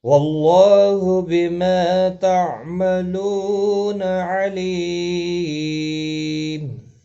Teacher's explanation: علیم لی یا مدہ ہے، ایک الف کی مقدار کے برابر کھینچ کر پڑھیں گے، اور وقف کی صورت میں میم ساکن پڑھا جائے گا، وقف بالاسکان ہوگا، مد العارض وقفی ہوگا، 3 سے 5 الف کے برابر کھینچ کر وقف کریں گے